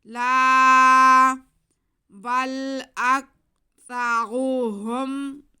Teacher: لا، لام پہ زبر اور ساتھ میں الف، تو یہ الف مدہ ہو گیا، لام کے بعد کو ہم کھینچ لیں گے